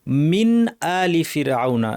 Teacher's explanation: নুন সাকিনের পর হামজা আছে এই নুন টাকে স্পষ্ট করে পড়তে হবে গুন্না বর্ধিত না করে